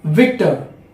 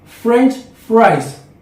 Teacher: We Indians do not speak proper V sound. It's a v, it means voice sound. And F, it means unvoiced sound. So you have to bite your lip while you are speaking V.